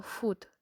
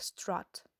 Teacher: Foot strut split, so foot does not rhyme with strut.